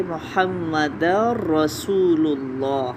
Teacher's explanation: تنوین کی آواز بالکل مرج ہو گئی را میں۔ رسو، سو کے لیے سین پیش واو، سو کے لیے ہون بالکل گول ہوں گے، لام کی دوما کے لیے ہون گول ہوں گے، اور اسم الجلالہ کے دونوں لام مخفم یعنی موٹے پڑے جائیں گے، ہا پہ وقف ہو رہا ہے۔ · ادغام ہو رہا ہے تو اس لیے دال کو مکمل طور پہ ہم را کے ساتھ ملائیں گے۔ محمد رسول اللہ، تنوین کی آواز بالکل مرج ہو گئی را میں۔